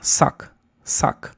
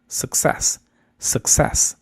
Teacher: aquí no es con A, aquí es con schwa. En vez de decir suck, se dice suck, suck, success, success, con schwa.